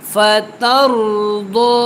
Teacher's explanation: रा को आपने यहाँ पे मोटा पढ़ना है क्योंकि रा साकिन है और उससे पहले ज़बर है। फतरदो, वाद के ऊपर खड़ा ज़बर भी है और आपने इसको मोटा भी पढ़ना है और इसकी मिकदार को आपने कम नहीं करना।